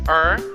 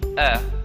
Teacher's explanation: americans say er and the british will say uh